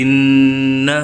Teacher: pada huruf nun bertasydid dibaca mendengung